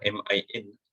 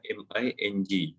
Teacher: kita tak baca min, kita baca MING. Dia ada dengung dekat situ. Jadi cara bacaan ni wa min, okey, dua harakat.